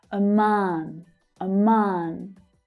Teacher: The second syllable has the strongest stress and it's the longer vowel sound. /ɑː/ like in 'father'